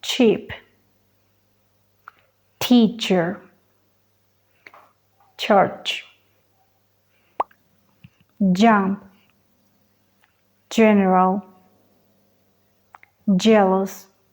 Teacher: significa que combina un oral stop o oclusión y un fricativo